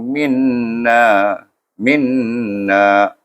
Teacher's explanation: Min jangan lupa, iaitu kena dengungkan dia, kena dia wajibul gunnah.